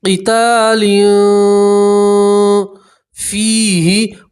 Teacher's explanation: تنوین کی آواز کو آپ ناک میں چھپائیں گے اور ایک الف کے برابر گنہ کریں گے، قتال فیہ، اور فا کے ساتھ یا مدہ اس لیے آپ حضرات ایک الف کے برابر کھینچیں گے۔ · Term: اخفا